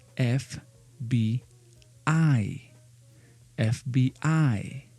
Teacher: the emphasis, the high intonation goes in the last letter of the acronym